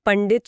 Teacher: पंडित शब्द में बिंदी के बाद ड है जो मूर्धा वर्ग का है तो बिंदी ण बन जाती है